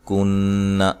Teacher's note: نون مشدد پہ غنہ ضروری ہے